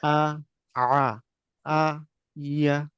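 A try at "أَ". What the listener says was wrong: হ্যাঁ, হামজার উচ্চারণটার উপর আপনি আরো ফ্রেশ করবেন। হঠাৎ করে যে টাস করে উচ্চারণ হওয়া এটা কম হচ্ছে হামজার উচ্চারণে।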